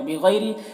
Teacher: بغیر غین کو پر پڑھیں گے، حروف مستعلیہ میں سے ہے، اور یا لین ہے یہاں پر، اسے نرم آواز کے ساتھ جلد پڑھیں گے۔ را کو باریک پڑھیں گے۔